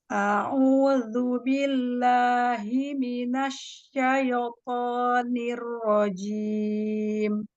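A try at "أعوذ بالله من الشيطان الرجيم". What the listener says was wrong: Ada syayyi ya. Syayyi. Itu hati-hati. Syaito. Langsung ke to-nya.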